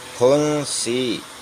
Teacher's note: اس کو پھا پڑھیں گے دونوں ہونٹ ملا کر، جیسے پا میں دونوں ہونٹ ملتے ہیں تو پھا میں بھی